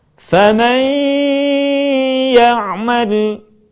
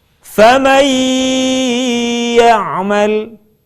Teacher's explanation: Selanjutnya, kesempurnaan di dalam membaca gunnah ketika kita mampu mengeluarkan sebagian suara kita melalui rongga hidung. Contoh, kalimat faman ya'mal akan lebih sempurna kalau sebagian suara kita keluarkan melalui rongga hidung.